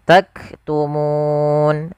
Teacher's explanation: Sukul karena waqaf maka muna menjadi taktumun. Ah, di sini munya panjang dulu baru matikan. Nah, pada lafal bacaan nun ini ada boleh kita memanjangkan dua harakat, empat harakat atau en harakat. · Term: mad arid